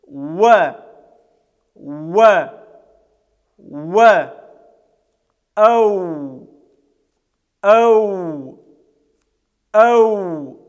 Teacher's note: Буква вау является губно-губной. Мы вытягиваем губы трубочкой, и таким образом этот звук произносится. Он является щелевым, является сонантой, в нем доминирует голос над шумом, и эта буква является мягкой, читается через «э».